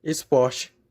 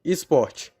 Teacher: A aférese do E em palavras iniciadas por ES. Esporte torna-se esporte.